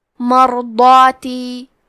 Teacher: کلمت مرضاتی میں حرف را پہ جزم ہے، یہاں را کا حکم ہے تفخیم تو ہمیں را کو موٹی آواز میں پڑھنا ہے۔ ضاد کی ادائیگی زبان کے کروٹ اور اوپر کے داڑھوں کی جڑ سے ہے، ضاد حروف تفخیم میں سے ہے تو ہم ضاد کو بھاری آواز میں پڑھیں گے، کیونکہ اس کے بعد مد الف ہے لہذا ہمیں مد الف کو بھی بھاری آواز میں پڑھنا ہے، مرضاتی۔